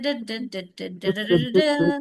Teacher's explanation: So tongue taps behind the teeth.